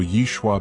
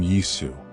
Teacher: Greek didn't have the sh sound shin, so Yishwa became yisu.